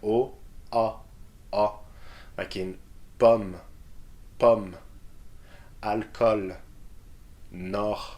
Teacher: We've got another O sound, which is more open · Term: open O